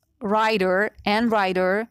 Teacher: very light voiced pronunciation, D between two vowels.